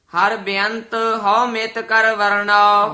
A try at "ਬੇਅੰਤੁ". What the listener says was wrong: ਬੇਅੰਤ ਬੋਲਣਾ ਹੈ ਸਿਹਾਰੀ ਨਾਲ। ਹਰ ਬੇਅੰਤ ਹਉ ਮਿਤ ਕਰ ਵਰਨਾਓ।